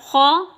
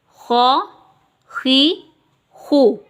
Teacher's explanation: अब खो हरूफ मुस्तआलिया में से आ गया तो हमने इसको मोटा करके पढ़ना है, यानी पुर करके पढ़ना है।